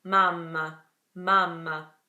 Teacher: So in Italian, all you're gonna do is keep your mouth closed for slightly longer. So mamma, mamma, that's it.